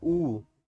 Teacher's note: आपकी जीभ का पीछे वाला हिस्सा काम करता है, ऊ। तो देखेंगे आपके गले में तनाव महसूस। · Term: पश्च स्वर